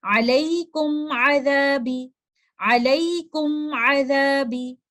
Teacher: मीम साकिना एक इज़हार की कंडीशन में है क्योंकि उसके बाद आने वाला लेटर है लेटर आइन, तो हम गुन्ना नाक़िसा करेंगे और इस गुन्ना का टाइम कंप्लीट गुन्ना से कम होगा।